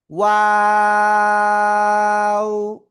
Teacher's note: দুই ঠোঁট গোল করে উচ্চারণ করব। প্রথমে গোল, মাঝখানের দিকে আবার দুই দিকে প্রসারিত হবে, শেষে এসে আবার গোল হবে।